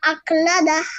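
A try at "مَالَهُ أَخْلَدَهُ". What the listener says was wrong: আখলাদা, এখানে নাকের মধ্যে বললেন কেন? সুন্দর করে বলেন।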